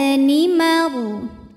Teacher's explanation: Bi'isab nimaru. Ro sukun dibunyikan secara tafkhim karena sebelumnya berharokat fathah, maka dibacanya tebal.